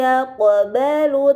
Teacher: pada kata yaqbalu terdapat huruf qaf sukun, ini dinamakan qalqalah, maka harus dibaca secara memantul